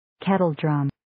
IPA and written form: 'ketəl,drəm (Kettledrum)